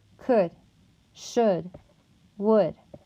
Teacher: The next sound is going to be the upsilon sound that makes such as in the word could, should, would. To produce the upsilon sound, the back of the tongue will be high but slightly lower than the oo sound. Also, your lips will be rounded and your tongue will be laxed.